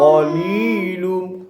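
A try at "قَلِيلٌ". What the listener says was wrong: semula tak kemas qalilun tu li tu panjang dua harakat perhati moleh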